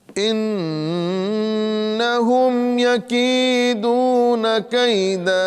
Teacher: یا مدہ بھی ہے اور واو مدہ بھی ہے، دونوں کو ایک الف کے برابر کھینچنا ہے